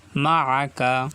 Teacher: আইন গলার ভিতরে যাবে, কণ্ঠনালীর মাঝখান থেকে উচ্চারিত হবে আইন